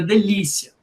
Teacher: A palavra delícia, li é a sílaba tônica.